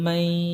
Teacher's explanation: হ্যাঁ, ইয়া ও মিম নুনকে গুন্না করে পড়তে হয়, যেহেতু ইয়া আছে এখানে তাহলে গুন্নার সাথে পড়তে হবে।